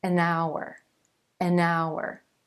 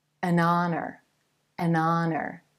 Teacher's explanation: that H is silent and the first sound you hear in each word is actually a vowel sound